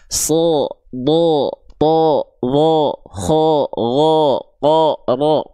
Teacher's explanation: ketika baris atas fathah teman-teman dengar yang keluar bukan bunyi vokal A, tapi terdengar seperti bunyi vokal O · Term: huruf tebal